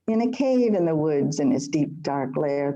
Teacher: she's using anapests that's soft soft hard